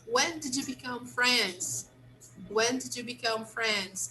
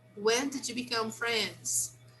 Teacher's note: even when we speak faster we don't really link